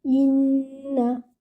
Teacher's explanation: Join your Hamza with the noon, and your noon is with shadda. That means you will have to do akmal gunna over here. That means the most complete gunna.